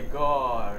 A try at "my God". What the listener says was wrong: My God. Okay, stress on God, not on my. Sometimes you can say my God, but that's rare. You know, it will be oh God, God. Round your lips, everybody, please.